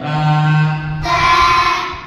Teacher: জিহ্বার আগা সামনে উপরের দুই দাঁতের গোড়ার সাথে লাগায়া